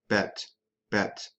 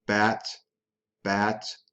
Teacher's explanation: I drop my jaw down, lower tongue is low in the mouth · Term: A is in bat